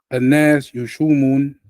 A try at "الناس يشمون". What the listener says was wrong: What about the shadda? What about the wow? يشمون. يشمون. Shamma. Shamma yashummu.